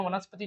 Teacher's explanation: वनस्पति जब बोलते हैं तो ती एकदम कम समय में खत्म हो जाता है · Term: छोटी ई